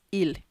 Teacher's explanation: It has S, but you don't pronounce the S. You pronounce it il.